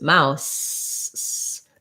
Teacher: the tongue is behind the teeth, and that's what makes that S sound